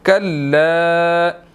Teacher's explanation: छोटी मद है, इसको 2 to 3 सेकंड्स हमने लंबा करना है